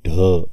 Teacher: नाद व्यंजन वर्ण आहेत मूर्धन्य उगमस्थान असल्यामुळे मूर्धन्य व्यंजन वर्ण आहेत महाप्राण मिश्रित व्यंजन वर्ण आहेत कारण ड मध्ये ह मिसळला ढ ऐकू येते